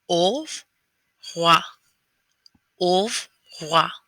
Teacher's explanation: And that R that's there, again, comes from the back of your throat. There are 2 R's in revoir. The first one comes from the back of the throat, and the last one just barely leaves your lips.